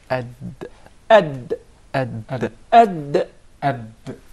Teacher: The Dal is pronounced from the top side of the tip of the tongue and the gum line of the two front upper incisors.